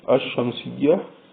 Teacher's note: the letter of this word sheen is being repeated twice because sheen is a solar letter